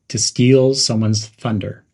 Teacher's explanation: Emphasize the words steal and thunder.